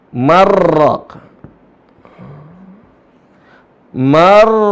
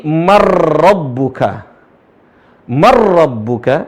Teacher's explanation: Langsung ke ro seolah-olah nunnya enggak ada. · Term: idgham